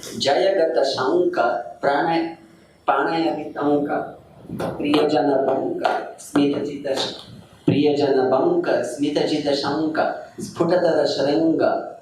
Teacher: he uses a lot of syllables from the ka varga, the guttural, ka, ga, and ng. So if you listen to it, it creates a special vibration.